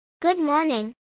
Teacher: acentuación en la segunda sílaba